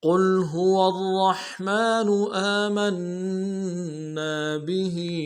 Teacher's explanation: قل میں لفظ قاف کو موٹا کریں گے، لفظ قل میں، اور لام کے سامنے لائیں گے، لام ساکن غنہ نہیں ہوگا۔